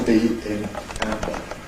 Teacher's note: Vocal cords continue to vibrate. We have a moment of build-up pressure, and then the lips separate in the normal way, so it's an ordinary release. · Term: nasal approach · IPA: ˈæmbə